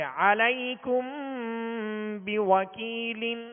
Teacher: اور عین کو وسط حلق سے ادا کریں گے. علیکم بوکیل، بوا، واؤں کو جب ادا کریں گے تو ہونٹوں کو گول کریں گے، ہونٹوں کی گولائی یہ واؤں کا مخرج ہے، اور ہونٹوں کو گول کرنے کے بعد پھر اس کی جب زبر پڑھیں گے تو اس وقت آواز اور منہ کھول دیں گے.